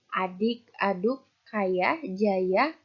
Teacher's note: posisi rahang bawah dengan posisi lidah berada di depan yaitu pada bunyi A